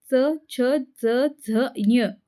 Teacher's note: च, छ, ज, झ, ञ या व्यंजनांना उच्चार करताना जिभेचा स्पर्श हा टाळूला होतो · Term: तालव्य व्यंजन